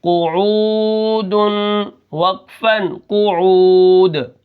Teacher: شہودن کی طرح یہ بھی قعود ہے، لیکن یہاں پر عین ہے، عین واو پیش عو، یعنی یہاں پر واو مدہ ہے اور پیچھے قاف کے اوپر پیش ہے، تو قاف کو ہم بالکل نہیں کھینچیں گے اور عین کو کھینچ کر پڑھیں گے، اور دال کے اوپر جو وقف ہے وہ ہے وقف بالاسکان۔